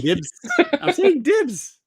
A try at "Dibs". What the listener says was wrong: No, you're saying Dips.